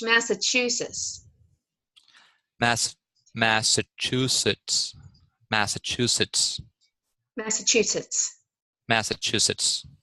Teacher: Your tongue never leaves the back of your alveolar ridge.